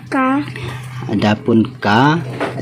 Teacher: Jadi suara lazim mengalir bersama napas. Suara huruf kaf tertahan saat disukun, lalu mengalir napas setelahnya.